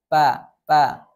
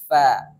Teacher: Itu keliru karena sifat huruf fa ada hams atau aliran nafas. Fa ada aliran nafasnya.